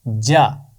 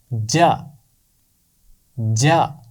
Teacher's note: जुबान का दरमियान का हिस्सा ऊपर की तरफ तालू से लगता है तो जीम की आवाज निकलती है जा। इसका मखरज है जुबान का दरमियान और ऊपर का तालू जा।